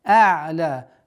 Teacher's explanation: Непринужденная, не резкая остановка над айном и удлинение в размере 2 огласовок.